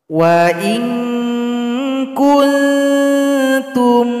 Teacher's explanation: di sini nun sukun jumpa dengan kaf, maka dibaca dengung dan samar-samar.